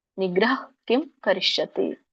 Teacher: ಅಲ್ಲಿ ವಿಸರ್ಗದ ಹ ಅಲ್ಪ ಉಚ್ಚಾರಣೆ ಆಗ್ಬೇಕು